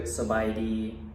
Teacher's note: first part of the word sabaidi sabaidi is the same tone it's a flat tone it doesn't change it doesn't go up or down